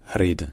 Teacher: ça peut aussi devenir un simple battement un r c'estàd un peu comme c'était un re mais battu qu'une seule fois